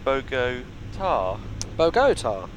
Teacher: the emphasis is on the last syllable, so it's Bogota